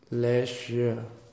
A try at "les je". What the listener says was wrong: Not together, it's too quick. When you're ready, you take the je.